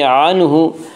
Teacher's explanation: وَمَا يُغْنِي عَنْهُ، عَنْهُ میں اظہار حلقی ہوگا، اس کا قاعدہ ہے کہ نون ساکن اور تنوین کے بعد اگر حروف حلقی میں سے کوئی حرف آئے تو وہاں پہ اظہار حلقی ہوگا، یہاں نون ساکن کے بعد حروف حلقی میں سے ہا آ رہا ہے، اس لیے یہاں پہ اظہار حلقی ہوگا